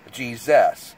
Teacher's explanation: she would want us to say Jesus to pronounce the U like a like a small e sort of sound